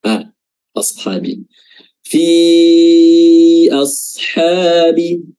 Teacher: Ashab satu kata nah dan ini di Ashab ada penyebab madnya penyebab dia panjang lebih dari dua harakat yaitu huruf hamzah pada awal kata A ashabi fi ashabi ah dan Kenapa kita baca empat harakat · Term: Mad Jaiz munfasil